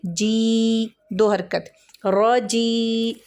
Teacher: یا مدہ کو 2 حرکت کے برابر کھینچ کے پڑھا جاتا ہے